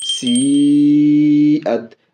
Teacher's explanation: یا حروف مدہ کے بعد حمزہ، حمزہ اسی کلمے میں اس لیے یہ بھی مد متصل بڑی مد کھینچ کے بولیں گے